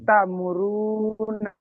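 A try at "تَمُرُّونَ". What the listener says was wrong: জি, র র পেশ রু, ওখানে টান হবে একালিপ, তাহলে তা মুরু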